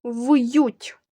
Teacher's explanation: перший звук твердий приголосний в